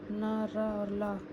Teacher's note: वत्सर्य व्यंजन। जिन व्यंजनों के उच्चारण में जिह्वा का ऊपरी भाग मसूड़ों को स्पर्श करता है वत्सर्य व्यंजन कहलाते हैं